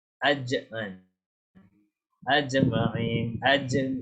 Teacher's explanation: makhraj dia dekat bahagian hadapan rongga hadapan mulut dekat antara langit-langit keras dan tengah-tengah lidah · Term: Jim